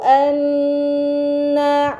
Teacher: terdapat nun bertasydid, ini dinamakan gunnah, maka harus dibaca dengan gunnah yang dipanjangkan